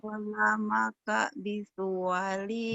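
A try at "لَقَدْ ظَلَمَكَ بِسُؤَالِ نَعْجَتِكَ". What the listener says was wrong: Bisua. Bisua bukan bisual. Bisua. Iya.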